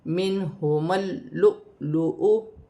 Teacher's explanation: میم کو لام کے ساتھ ملا کر پڑھا جائے گا